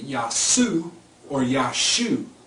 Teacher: in some dialects of Arabic, the Ayin is slowly becoming silent. So you hear a lot of them say Yasu or Yashu, okay, but the ayin is on the end in Arabic, and it's even called ayin.